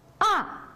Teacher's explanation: 4. ton shu yuqoridan tuvanga undaq tushadi